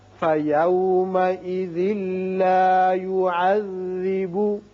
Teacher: یہاں ادغام بغیر غنہ ہوگا. ذال کی تنوین لام سے، یعنی ذال کی ایک زیر پڑھیں گے، نون کی آواز نہیں نکلے گی